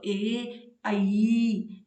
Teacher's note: कंठ और तालु दोनों उच्चारण स्थानों से मिलकर के ए और आई का उच्चारण हमने किया है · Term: कंठ तालु